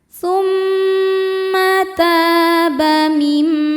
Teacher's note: Tumma taba ta hukumnya mad thobi'i zohiri. Sebab ada alif sebelumnya berharakat fathah. Cara bacanya panjang dua harakat.